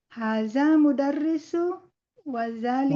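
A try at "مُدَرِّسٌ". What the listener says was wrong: Mudarisun. Ini tanwin Ibu. Mudarisun.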